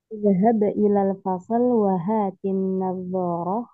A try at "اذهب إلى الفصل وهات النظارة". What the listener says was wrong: Nadanya bukan wahatin nazar, tapi wahatin nazarah. Nah, tadi itu seperti bertanya ya nadanya.